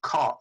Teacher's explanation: so when you say caught you're expelling a puff of air and if you put your palm of your hand in front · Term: aspirated sounds